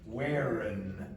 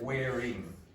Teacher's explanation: it is common in Irish English especially, but it happens in other dialects, to change that ing to an n.